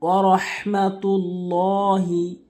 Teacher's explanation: বড় হা উচ্চারণ করবো। অধিকাংশ লোক যে ভুলটি করে ছোট হা উচ্চারণ করে